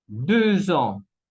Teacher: acá la X se cambia en Z para decir 2 ans.